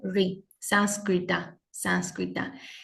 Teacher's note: Es como una R con una pequeña I y llevando el ápice de la lengua hacia el cerebro